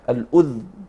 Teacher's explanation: بسكون الذال تخفيفا للضمة التي يقرأ بها كل القراء